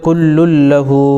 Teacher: اسی طریقے سے کل لہ، لام کے اوپر تنوین ہے، تنوین کے بعد حروف یرملون میں سے لام آ گیا تو یہاں پر ادغام بلا غنہ ہوگا